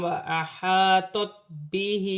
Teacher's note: ہا کے نیچے خڑی زیر ہے، ایک الف کی مقدار کھینچ کر پڑھا جائے گا